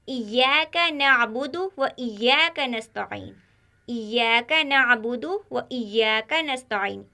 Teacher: इस आयत में कोई हर्फ मोटा नहीं, यहाँ पर भी सभी हर्फ बारीक है